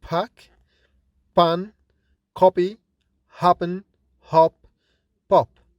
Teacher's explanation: That is, P and B are different in another feature which is called force of articulation. That is, P is produced with more force since it is produced without vibration in the vocal cords. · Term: fortis